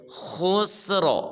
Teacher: آخر میں را کو پر ادا کریں گے